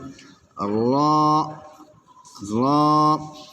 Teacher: জিহ্বার আগার পিঠ তার বরাবর উপরের তালুর সঙ্গে লাগাইয়া